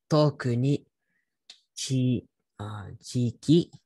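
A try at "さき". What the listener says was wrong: Close, that's actually saki. Chi is like made. Very similar.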